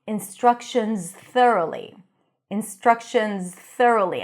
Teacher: The tongue is inside for the Z, instructions, and then you push it forward for the TH. Try to do it smoothly.